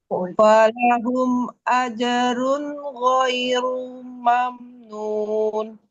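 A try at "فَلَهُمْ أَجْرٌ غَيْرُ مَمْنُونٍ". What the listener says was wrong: Ghairu jangan panjang. Rumam. Rumam. Jangan rumam.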